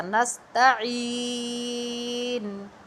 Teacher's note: نستعین، یہ اس پر بھی مد آ گئی کیونکہ عین یا زرعی حروف مدہ میں سے ہے، یا مدہ ہے، اور نون کو جب ہم نے ساکن کیا اس پر پیش تھی تو ساکن کرنے سے ہم نے اس کو تھوڑا لمبا کر کے پڑھا۔